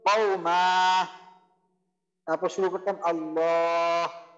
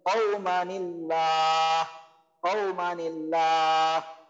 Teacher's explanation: Just মানে পরের শব্দের আগে নুন জের বসবে। হ্যাঁ, তানবিনের একটা জের জবর পেশ একটা থাকবে, আর তার উপর যে এই নুন সাকিনটা ছিল, নুন সাকিনটা নিচে আগের হরফে, এবার পরের শব্দ শুরুতে নুন জেরটা চলে আসবে, নুন নিচে জের চলে আসবে, তারপর আমাদের নর্মালি মিলায় পড়তে হবে।